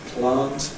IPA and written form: plɑːnt (plant)